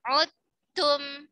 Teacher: Seperti kata udtum diidghamkan menjadi udtum. Dalnya hilang secara sempurna, idgham kamil ke huruf ta. Udtum. Seperti antum tahu bahwa huruf dal dan huruf ta adalah satu makhraj, ya. · huruf dal dan huruf ta adalah satu makhraj, ya. Ujung lidah bertemu dengan pangkal gigi seri atas.